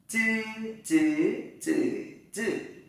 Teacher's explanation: Các bạn thẳng lưỡi, không bật hơi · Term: chữ Z